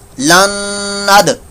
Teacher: दाल साकिन में कलकला हो रहा है, साकिन कलकला।